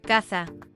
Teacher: in the Southern variant, it's often pronounced as S without distinguishing between Z and S. This is why casa, house, and caza, hunt, which are distinct in Standard Spanish, are pronounced the same way as casa.